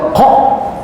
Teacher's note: Sebab qaf ini kita matikan. Qaf bila mati dia bersifat qalqalah, dia lantun.